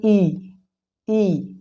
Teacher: आपको लग रहा है कि पीछे से आवाज आ रही ई ई मतलब जीभ के अग्र भाग से बोला जा रहा है